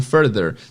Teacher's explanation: você tem duas sílabas. Fur e o there, que é o TH vozeado